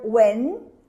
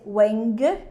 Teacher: You see that I don't pop the G, I don't say weng.